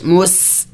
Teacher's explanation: سین سیٹی والے حروف میں سے ہے، سیٹی کی آواز نکلنی چاہیے پڑھتے وقت